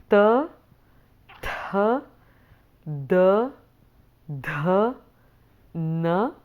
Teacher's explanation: the tongue is slightly sticking out from in between your teeth, slightly, or it's exactly behind the teeth. So it's there's slight sticking out of the tongue there. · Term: dentals